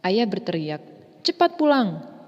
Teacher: frasa cepat pulang dibaca dengan nada yang lebih tinggi dibanding kata ayah berteriak.